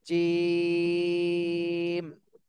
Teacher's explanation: তিন আলিফ টান হবে আরেকটু টান দিতে হবে